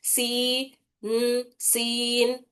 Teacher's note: सीन या जेर सी और एक साकिन नून, सीन, इसको भी सीन, थोड़ा सी की आवाज को खींच रहे